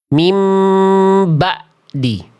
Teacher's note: Mim bukan hanya terputus tapi jadi hamzah.